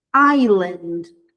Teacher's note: Esse s não é pronunciado